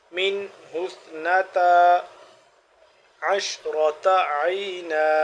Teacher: سا نرمی سے پڑھیں گے، زبان کی نوک کو زبان دو دانتوں کے درمیان باہر کی جانب نکال کر